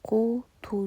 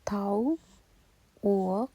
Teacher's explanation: Бірінші У дыбысы дауысты болып келетін қу, ту сөздері және екінші дауыссыз У дыбысы тау, уық және ау сөздерінде дауыссыз дыбысқа айналып тұр